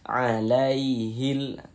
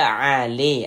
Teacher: Hati-hati mengucapkan huruf lin yang terjadi pada huruf ya sukun. Jangan sampai condong ke huruf e. Jangan dibaca ale, jangan, tapi dilunakkan saja, lembut.